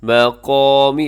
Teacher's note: قاف الف قا یہ موٹا پڑا جائے گا، اسے آپ نے باریک نہیں کرنا